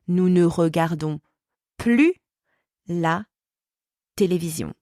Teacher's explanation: the word plus is pronounced plus, so the S is silent, in negative sentences with ne plus before a consonant.